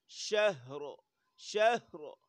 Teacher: آخر میں را وقف کی صورت میں موٹی ہوگی